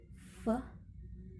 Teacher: The place of articulation is labiodental. The manner of articulation is fricative.